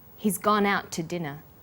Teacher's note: The to is unstressed. When we link out, which is stressed, and to, which is unstressed, the final t sound in out is held slightly longer.